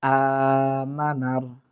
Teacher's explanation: হামজা খাড়া জবর আ, এক আলিফ টানবো, মানার দ্রুত উচ্চারণ করার চেষ্টা করব।